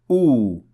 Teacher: you have to say oo without raising the middle of the tongue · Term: wow